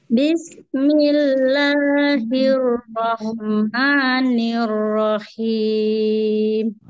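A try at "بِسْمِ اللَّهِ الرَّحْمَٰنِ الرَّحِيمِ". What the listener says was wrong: Mantap.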